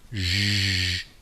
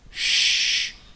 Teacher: The SH sound, sh, in English, and the very other related sound, zh, differs only that the zh sound uses the vocal cord and the sh sound does not